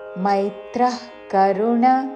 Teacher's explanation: మేత్ర కాదు మై ఐత్వముతో మైత్రః కరుణ విసర్గ తర్వాత కాతో పదము మొదలవుతున్నది కాబట్టి నాభి నుండి శ్వాస వదిలి చివరిన ఖ లాగా ఉచ్చారణ.